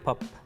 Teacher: you say the word pop you are producing the phoneme p it is an example of a consonant phoneme produced using a strong voiceless articulation this type of phoneme produces a popping sound but is unvoiced or voiceless voiceless means producing a sound without the vibration of the vocal